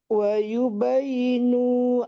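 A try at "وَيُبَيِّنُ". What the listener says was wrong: Wa yubayyinu ya-nya ditasdid. Wa yubayyinu pendek juga. Wa yubayyinu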